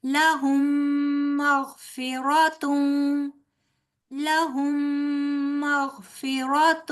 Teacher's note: میم ساکن کے بعد آگے میم آ رہا ہے جو حروف یرملون میں سے ہے، یہاں پر ادغام ہوگا اور یہ ادغام جو ہے یہ غنہ کے ساتھ ہوگا